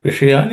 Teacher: the sha in the vishayan is a cerebral sh. So the tongue tip of the tongue should point towards the roof of the mouth.